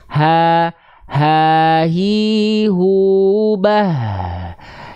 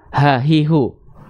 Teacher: hak besar tuh dari pangkal tenggorokan pita suara yang membuka.